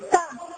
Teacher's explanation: O tá é surdo, eu não preciso utilizar a prega vocal.